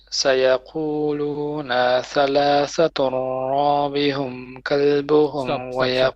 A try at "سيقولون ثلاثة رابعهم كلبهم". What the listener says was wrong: Okay, now again you stretch the noon and you say رابعهم. No, it's رابعهم. So سيقولون ثلاثة رابعهم كلبهم.